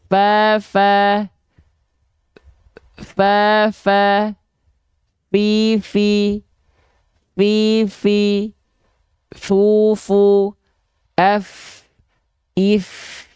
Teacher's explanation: ujung gigi seri atas kita disentuhkan dengan bibir bawah bagian dalam. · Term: huruf fa